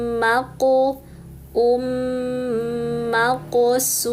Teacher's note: un idghamkan ke mim sehingga bunyinya um